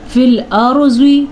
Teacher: را پر پڑھنا ہے کیونکہ را ساکن ہے اور را سے پہلے زبر ہے۔